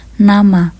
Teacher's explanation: artikulasi yang dilakukan oleh daun lidah dan gusi atas sehingga menghasilkan bunyi n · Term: bunyi laminoalvealor